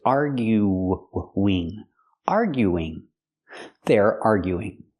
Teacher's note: we need an extra sound we need the w w sound to link the vowels